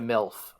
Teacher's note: because I'm a Midwesterner, I pronounced MILF with an E instead of an I because of the vowel shift